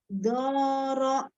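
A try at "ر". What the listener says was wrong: Masih ro-nya masih ada hamzahnya. Tidak, ro. Ro-nya naik ro fathah tebal. Ro, tidak ro.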